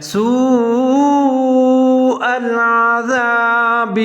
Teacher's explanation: بڑی مد اور حمزہ دونوں ایک ہی لفظ میں آ رہے ہیں، تو اس کو 3 سے 4 سیکنڈ تک آپ لمبا پڑھ سکتے ہیں۔ سوء العذاب، ذال کا خیال رکھنا، اس کو زا نہیں پڑھنا، سوء العذاب۔